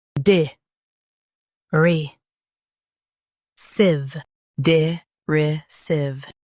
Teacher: Emphasize RY and keep sive light.